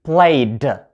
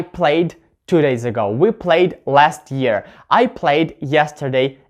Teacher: the ending is going to sound like voiced d because the letter before this one is the voiced y